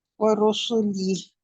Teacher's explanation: آپ کے ہونٹ سبھی کے لیے گول ہوں، را اور سین. ورسله واو کے لیے تو آٹومیٹکلی وہ تو ہونٹ گول ہی ہوتے ہیں تو پھر ہی پڑھا جاتا ہے.